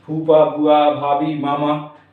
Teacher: इनमें ओंठ टकराते हैं, इसलिए ओष्ठ व्यंजन कहलाते हैं।